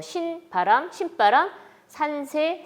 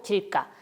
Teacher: 합성명사의 경우에는 이 뒤에 나오는 그드부스즈를 경음으로 발음을 하게 됩니다